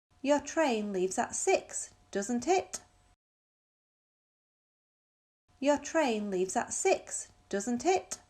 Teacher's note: question tags showing less certainty, we use rising intonation. لما بيكون الquestion tag ما أنا متأكد من اللي عم بيقوله فبيكون عندي rising intonation.